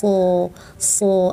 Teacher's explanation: angkat pangkal lidah, ujung lidah tempel gigi seri bawah